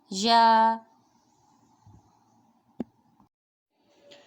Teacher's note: یا جو ہے منہ کے خالی حصے سے ادا ہوتا ہے، جوف والے حصے سے